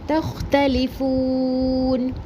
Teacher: تختلفون تا کا زبر خوا ساکن سے ملا کے پڑھیں گے، خوا کو پر پڑھیں گے · پڑھیں گے، اس کے بعد بھی تا کے اوپر سنگل حرکت، لام کے نیچے سنگل حرکت زیر اور فو واو مدہ ایک الف برابر پڑھیں گے اور آیت ختم ہونے کی صورت میں وقف حارف سکون کریں